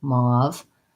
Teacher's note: So mauve has the aw vowel and a V